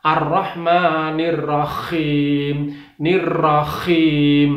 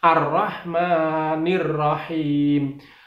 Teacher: himnya itu harus ha, bersih, tipis, bersih, tidak boleh ngorok